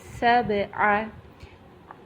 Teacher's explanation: سین جو ہے سٹی والے حروف میں سے ہے، اس کو جب ادا کریں گے تو اس میں تھوڑی سی یہ سٹی کی ساؤنڈ آئے گی